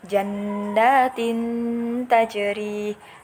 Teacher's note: dibaca samar-samar dan dengung karena di sini ada hukum bacaan ikhfa hakiki. Sebab ada kasroh tanwin bertemu dengan huruf ta.